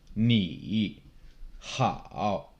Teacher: Third tone, it starts low, it drops and kind of bottoms out in your voice and then comes back up.